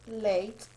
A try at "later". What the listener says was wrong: On number 2, see that R on the end? Later. So if you take the R off, late, I'm late for class. You put that R on it and it's later.